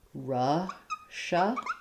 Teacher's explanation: for Russia, in English, we say this with the SH sound. It's first syllable stress, Russia. And then if I add the apostrophe, then it just adds a Z sound.